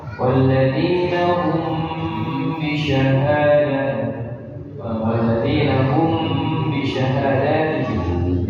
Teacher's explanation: mim sukun jumpa dengan huruf ba hukumnya ikhfa syafawi harus gunnah